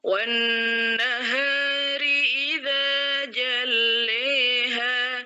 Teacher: Abul Harith, ya, perawi pertamanya Imam Al-Kisai membaca zawatur ra dengan bacaan sebagaimana Hafiz, ya, tidak diimalahkan